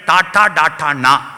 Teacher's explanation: അണ്ണാക്കിന്റെ മൂർധാവിൽ നാവ് കുത്തി വ്യഞ്ജിപ്പിക്കുന്ന മൂർധന്യം